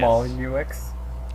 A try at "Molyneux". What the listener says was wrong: I know it doesn't end with the X, but it does. it's not pronounced.